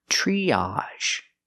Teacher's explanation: TR makes the ch sound like chicken, plus the R, tree. Use the long E like green beans.